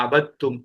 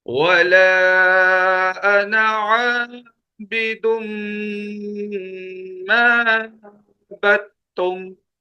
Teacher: یاد رکھیے ایک عام سا اصول ہے، بہت سمپل سا، کہ پہلے والے ساکن کو چھوڑ دیں، اس کو اسکپ کر دیں، حذف کر دیں، پڑھنے میں، لکھنے میں نہیں، پڑھنے میں، پڑھنے میں اسے حذف کر دیں، اس کو مت پڑھیں. دال کو نہیں پڑھیں گے، با کو تا سے ملانا ہے، با تا زبر بت، دال لکھا ہوا ہے پڑھا نہیں جائے گا.